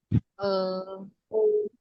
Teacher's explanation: Ya kayak e gitu kalau kalian lagi bingung mau ngomong apa itu kayak e, jadi lidahnya itu agak di tengah ya